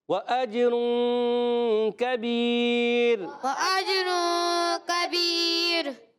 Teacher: کبیر کاف موٹا نہیں، کاف باریک